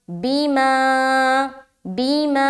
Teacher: माँ में खींच रहे, बी को जल्द अदा कर रहे